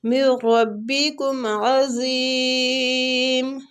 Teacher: نون ساکنہ کے بعد اگر را جائے تو ادھر ادغام بلا غنہ ہوتا ہے، مطلب غنہ نہیں ہوتا